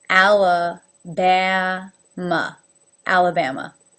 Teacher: 2 are pronounced A with the lift, A as in bat, and 2 as the schwa, very relaxed.